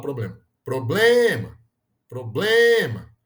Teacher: problema então problema é uma palavra paroxítona